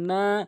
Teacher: মদের হরফ এটি একালিফ করে টেনে পড়তে হবে। যেমন নুন আলিফ জবর না, এখানে একালিফ করে টেনে পড়বেন।